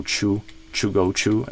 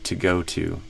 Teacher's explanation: that tch sound in choo is often a pretty strong tell for uh you know Brazilian accent.